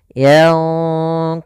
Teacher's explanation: Sedangkan ikhfa itu nunnya disamarkan kepada huruf qaf. Dan qaf termasuk huruf yang tebal, maka ikhfanya juga ikhfa yang kita tebalkan